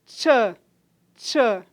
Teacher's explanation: Começa com a oclusão e termina com uma fricção. Então, a fricada, por essa razão, é alvéolo palatal, porque a produção do som se dá um pouco mais para trás dos alvéolos, alvéolo palatal ou pós-alveolar é a mesma coisa.